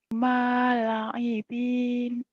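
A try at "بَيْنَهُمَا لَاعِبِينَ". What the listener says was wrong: La-nya panjang. Bainahuma. Bainahuma la'ibina.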